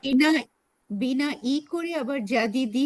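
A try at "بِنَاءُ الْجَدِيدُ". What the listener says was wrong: হ্যাঁ হ্যাঁ, ওটা ওইটা ওইটা আপনার সেটা ঠিক আছে, মানে বাট হচ্ছে জিনিসটা বিনা ই হবে না, বিনা উ, কারণ হচ্ছে এটা হাজা হুয়াল বিনা উল জাদিদু, তারপরে হচ্ছে এটা কি?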